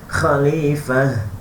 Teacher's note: Waqaf jika huruf ta marbutah, ini kata ta marbutah, bila waqaf akan jadi huruf ha yang tebal.